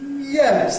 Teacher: I might start a bit before the top and lead up to the top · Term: High Fall